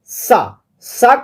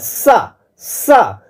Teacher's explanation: ऐसा लगता है कि ये एकदम घसा मार के बाहर निकल रहा है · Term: संघर्षी व्यंजन ध्वनि